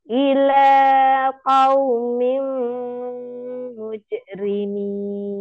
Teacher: Qaumim masuk dengan dengung ya, langsung masuk.